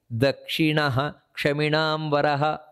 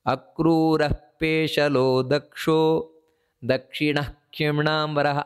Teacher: ಏನು ಅಂತ ಹೇಳಿದ್ರೆ ಅಕ್ರೂರ ಪೇಶಲೋ ದಕ್ಷೋ ದಕ್ಷಿಣ ಕ್ಷಿಮಣಾಂಬರಹ ಆ ರೀತಿ ಹೇಳುವುದಲ್ಲ ದಕ್ಷಿಣಹ ಅಂತ ಆ ವಿಸರ್ಗವನ್ನು ಪೂರ್ತಿಯಾಗಿ ಹೇಳಬೇಕು ಯಾಕಂದ್ರೆ ಇದೊಂದು ಸಂಸ್ಕೃತದ ವ್ಯಾಕರಣದ ನಿಯಮ ಕ್ಷಕಾರ ಇದ್ದಾಗ ವಿಸರ್ಗವನ್ನು ಸಂಪೂರ್ಣವಾಗಿ ಹೇಳಬೇಕು ಅಂತ